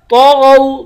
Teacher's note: طا اور غین دونوں کو پر پڑھیں گے یعنی موٹا پڑھیں گے